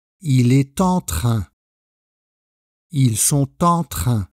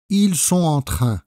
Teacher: Avec les pronoms de la troisième personne, singulier et pluriel, on va avoir une liaison avec le son « t ».